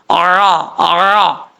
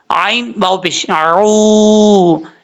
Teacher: عین کو پڑھتے ہوئے آپ نے اپنے مخرج سے ادا کرنا، اس کے عین کے مخرج سے ادا کرنا ہے، حمزہ کی آواز نہیں آنی چاہیے